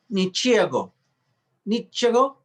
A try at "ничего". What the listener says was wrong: The stress is on the O, it's correct. But sometimes in Russian, instead of G, we read as V. Ничего.